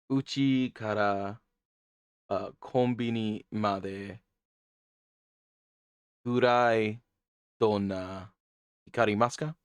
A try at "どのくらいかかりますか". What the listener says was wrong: Dono gurai kakarimasu. Yeah, you said gurai donna. Dono gurai.